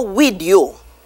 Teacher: TH is often replaced with the D sound.